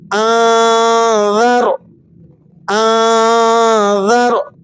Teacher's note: نون ساکن پر آپ یہاں اخفا ادا کریں گے، رو کو پر کر کے پڑھنا ہے آپ نے